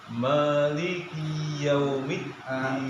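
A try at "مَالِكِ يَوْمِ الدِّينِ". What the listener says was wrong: kafnya jangan dipanjangkan maliki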